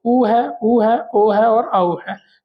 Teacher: ऐसे स्वर जिनका उच्चारण करते समय क्या होगा? होठों की आकृति कैसी हो जाएगी? गोल हो जाएगी। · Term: वृत्ताकार